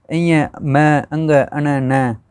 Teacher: ये जो है ना पंचम वर्ण अपने इं मैं अंग अन न ये नाक से बोले जाते हैं, और नासिका च यानी कि ये अपने पीछे किया है, जैसे कि कंठ, कंठ में अंग आ गया, ठीक है, क वर्ग के अंदर, तो ये कंठ से भी बोले जाते हैं और नासिका से भी बोले जाते हैं।